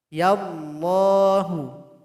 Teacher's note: maka lafaz Allah atau lafzul jalalah mesti dibaca tebal